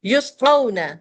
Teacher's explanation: یسقون واولین ہے، جلدی پڑھا جائے گا